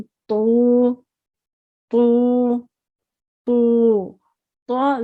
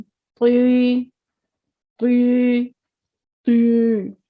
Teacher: زبان کی جڑ جو ہے آپ کی وہ تالو کی طرف اٹھ جائے گی، تب یہ حروف موٹے ادا ہوں گے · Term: حرف مستعلیہ